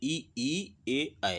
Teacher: जीभ का जो आगे का हिस्सा है इसमें ही कंपन होगा, यही थोड़ा बहुत उठेगा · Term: अग्रस्वर